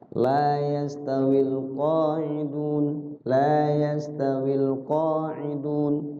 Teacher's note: La adalah mat tabi atau mat asli, memiliki durasi dua ketukan. Jangan panjang-panjang ya.